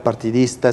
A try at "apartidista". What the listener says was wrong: Apartidista, dijiste. sonó partidista, pero te entendía, apartidista, sí.